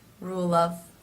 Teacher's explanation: And because that sound is unvoiced, it sometimes makes the sound before also unvoiced. So you will not hear a strong V sound, but more of a quick FV mix.